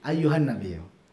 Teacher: Jadi kalau mad antara 2 sampai 6 itu dua aja cukup. Kemudian untuk ghunah enggak perlu dipanjangin gunahnya gitu.